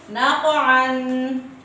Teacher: قاف موٹا ہے، نقطوں والا قاف ہے اور ساکن ہے، اس لیے اس کے اوپر قلقلہ کریں گے اور ہلا کے پڑھیں گے